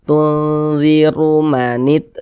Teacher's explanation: Huruf ra ada harokat dhammah, maka huruf ra dibaca tebal, dibaca tabkhim.